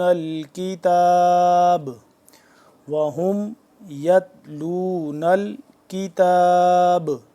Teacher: جب کتاب کریں گے وقف کریں گے تو با ساکن ہو جائے گا، تو یہاں پہ قلقلہ آئے گا کیونکہ قلقلہ حرف میں سے با آ گیا، ٹھیک ہے۔